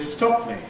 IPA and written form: ˈstɒp mi (stop me)